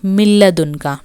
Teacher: Min plus ladunka, it will be milladunka. No elongation, no nasalization. So it will be again in bila ghunna.